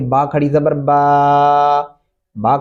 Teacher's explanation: खड़ी ज़बर को एक अलिफ मद्दा के बराबर आपने खींचना है, इससे ज़्यादा नहीं खींचना